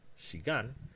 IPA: ʃigan